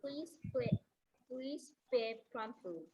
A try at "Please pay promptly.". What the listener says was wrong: Once again, C-A-Y, P-A-Y should be pronounced as pay. That A sound should come. A-Y gives the sound A. It's a diphthong. Two vowel sounds comes there together and the sound is A, pay.